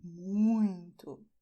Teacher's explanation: you're going to, well, use your nose. You will do the sound more or less like a cow does... A cow moos by saying "mooo", all right? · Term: nasal